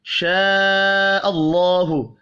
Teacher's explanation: اللہ کا نام زبر کی وجہ سے پر پڑھا جائے گا